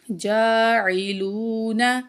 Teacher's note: جیم کے اوپر کھڑی زبر ہے، ایک الف کے برابر کھینچیں گے، واو کو بھی کھینچیں گے، حروف مدہ میں سے ہے.